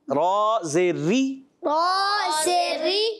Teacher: अच्छा, रा को बारीक रखना है।